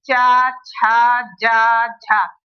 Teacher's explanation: अब स्पर्श संघर्षी क्यों बोलते हैं इसको, कि जीभ हमारी रगड़ के, मुंह से जब हवा निकलती है वो रगड़ के निकलती है · जीभ जब हमारी तालू से चिपकती है, उससे तालू से हमारी चिपक रही है, तो थोड़ा उसे नीचे आने में देरी लग रही है। ठीक है, जल्दी से नहीं आ रही है वो नीचे, तो जो हवा निकल रही है वो थोड़ी रगड़ के निकल रही है, तो ये इसको बोलेंगे स्पर्श संघर्षी।